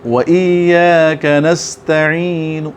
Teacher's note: اور وقف بالروم حرکت کا تہائی حصہ ادا کریں گے، وَإِيَّاكَ نَسْتَعِينُ۔